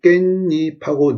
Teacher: 깨하고 잎 하면 발음이 깻잎하고 니은 소리가 덧납니다